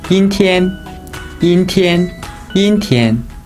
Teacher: 阴 first tone. 天 first tone.